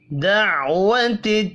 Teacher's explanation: عین ساکن پر قلقلہ نہیں کریں گے، حرکات کھینچ کر نہیں پڑھی جائیں گی۔